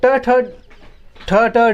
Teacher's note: ट ठ न बोलेंगे तब हमारी जीवा मुर्दा से टकराती है।